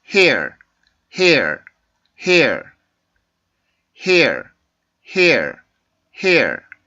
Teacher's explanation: 그 끝에 보면 R 발음에서 울림 소리가 있죠. 그냥 hair 이런 소리가 아니고 hair 이라고 하는 조금 울림 소리를 가지고 있는데 이건 R 발음의 특징입니다.